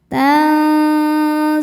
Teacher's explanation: Cara bacanya nun disamarkan ke zai disertai bunyi dengung. Dengan tingkat dengung dan kesamarannya sama besar. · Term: ikhfa hakiki awsat